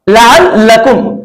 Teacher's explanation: लाम को पहले मरतबा आइन के साथ साकिन किया, उसके बाद फिर लाम को उसकी हरकत के मुताबिक मैंने पढ़ा लअल्लकुम। चूंकि लाम के ऊपर जबर की हरकत है इसलिए हम इसको जल्दी पढ़ेंगे, हरकत की वजह से हरकत को खींचकर नहीं पढ़ते हैं। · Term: तशदीद